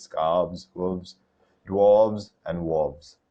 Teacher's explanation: make sure you're emphasizing the v sound instead of the f sound